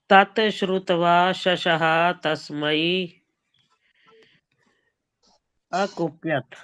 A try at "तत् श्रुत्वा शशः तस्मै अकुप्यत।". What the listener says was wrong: हाँ, तात नहीं बोलो, हलंत है। तत् श्रुत्वा